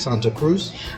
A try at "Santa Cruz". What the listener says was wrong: I think the only thing I will change in the pronunciation is the Z. In English, you tend to pronounce the Z very strong, but in Spanish, it's not. So it should be Santa Cruz, no Santa Cruz, if that makes any sense.